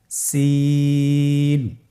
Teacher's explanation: জিহ্বার আগা সামনের নিচের 2 দাঁতের পেট ও আগার সঙ্গে লাগিয়ে উচ্চারিত হয়।